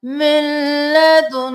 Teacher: اس نون کو چھوڑ کر میم کو لام کے ساتھ ملائیے